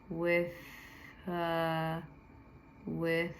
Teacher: that soft th just like it's it behaves like an F that you make with your tongue